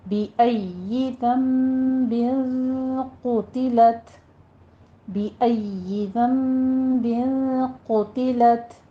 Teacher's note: क़ौफ़ को पुर पढ़ना है होंठों को गोल करते हुए · ज़म्बिन में नून साकिन का कादा इक़लाब करेंगे, 2 काउंट करना है। फिर बिन में इख्फ़ा है और आगे क़ौफ़ आ रहा है तो ये इख्फ़ा भी पुर होगा।